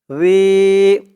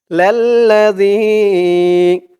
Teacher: লাম জবর লা লা লা এক আলিফ টান এরপরে ইয়াসাকেন আর এই জালকে একদম নরম পাতলা করতে হবে জিহ্বার মাথা ওপরের দাঁতের মাথার সাথে লাগবে জালের উচ্চারণ করার সময়